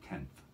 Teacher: But for tenth, my tongue comes between my teeth, so it's called an interdental nasal in that case.